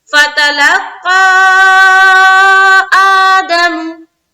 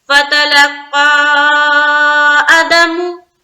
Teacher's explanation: आ को हम खींचेंगे क्योंकि अलिफ मद्दा के बराबर होता है खड़ा जबर, तो यहाँ पर हमने खींचा है अलिफ की मकदार के बकदर, दमु को जल पड़ रहे हैं।